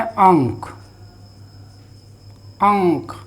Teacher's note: अनुस्वार के बाद क है, यानी कि क वर्ग का है, तो उसका पंचमाक्षर आएगा उच्चारण के लिए।